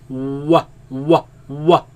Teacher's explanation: Wow, you use both lips only.